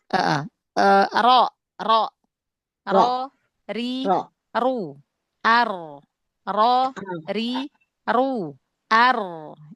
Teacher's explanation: Ujung lidah dan sedikit punggung lidah, ya, menempel dengan area gusi yang ada di atasnya, di sekitarnya, di atasnya, berarti ya. Dekat dengan makhraj huruf nun, ya. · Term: huruf ra